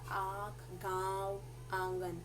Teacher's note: दोनों नाक और मुख दोनों से साउंड निकल रही है